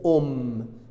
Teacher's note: voudrais vous dire quand qu'est-ce qui empêche la nasalité en français si vous trouvez double m ou double n on a dit le double m se prononce un seul M alors il n'y a pas de nasalité